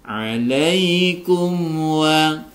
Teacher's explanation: mim sukun bertemu dengan waw dibaca idhar safawi, harus dibaca jelas, tidak boleh didengungkan